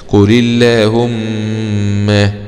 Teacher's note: الميم هذه ميم مشددة يعني فيها الغنة بمقدار حركتين